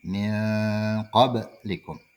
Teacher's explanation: Nun mati bertemu dengan huruf qaf. Dan qaf adalah salah satu huruf ikhfa. Maka dibaca dengung.